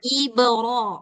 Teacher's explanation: R ro itu tandanya dia tebal, berat. Dia pangkal lidah kita terangkat ketika mengucapkan huruf huruf yang tebal.